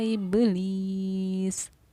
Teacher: ब का ये आवाज़ का बा साकिन पर आवाज़ का लौटना, ये हमारा खलखला कहलाता है। ये दोनों ही हुरूफ हमारे हुरूफ खलखला में से हैं।